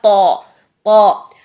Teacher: जुबान का दरमियान भी ऊपर तालू से लग रहा है, जुबान की जड़ भी ऊपर को उठी हुई है, भरा हुआ है मुंह, सारा का सारा मुंह भरा हुआ है, भरी हुई एक आवाज निकलेगी जो कि हो गया तौ। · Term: मोटे हरूफ